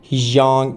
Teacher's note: When we have a liaison fact, like S sounding like Z plus Y, we change it into a J sound · We have S here in his, okay, but it sounds like Z, okay, and plus Y. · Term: liaisons